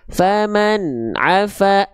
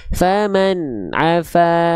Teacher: an-nya harus sedikit mengalir. Nggak boleh terputus.